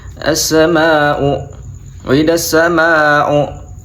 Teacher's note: mad tabi'i tapi bertemu dengan hamzah dibaca menjadi mad wajib mutasil dan panjang 5 harokat